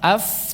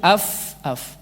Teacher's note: Gigi seri atas nyentuh bibir bawah, iya tidak? Bibir bawah bagian dalam, bukan bagian depan ya, jangan diginiin. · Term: titik fa